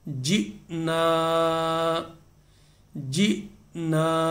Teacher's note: حمزہ جیم کے ساتھ جب یہ ملی تو کیا ہے، جھٹکا لگا، اس طرح کہ یہ بتایا میں نے آپ کو کہ الف کے اوپر جزم آنے سے اس میں جھٹکا لگتا ہے، تو ایک آپ یہ سمجھ لیں کہ الف نہیں بلکہ یہ حمزہ بن گئی ہے اس کی جزم آنے کے ساتھ۔